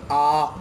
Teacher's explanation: विवृत स्वर के उच्चारण में पूरा मुंह खुल जाता है, यानी जब इनको हम बोलते हैं तो मुंह ऐसा लगता है जैसे पूरा खुल गया हो। बोलकर देखिए, आ, ऐसा लगेगा जैसे पूरा मुंह चौड़ा हो गया हो, खुल गया हो।